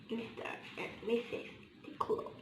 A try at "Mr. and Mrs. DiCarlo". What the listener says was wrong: It's not DiClo. It's DiCarlo.